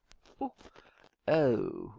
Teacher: starting with the relaxed one uh and then moving towards the oh